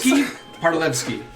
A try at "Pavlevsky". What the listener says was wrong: That's an V, not an R.